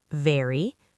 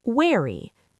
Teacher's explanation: For V, teeth on lip. For W, round lips.